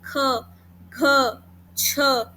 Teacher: महाप्राण होता है जिसमें ज्यादा वायु निकलती है